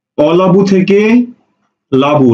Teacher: শব্দের শুরুতে অধ্বনি লোপ পেয়েছে সুতরাং এটা আদি স্বরলোপ